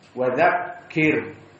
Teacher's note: ra-nya hukumnya adalah ra muraqqaqah karena dia sakinah sebelumnya kasrah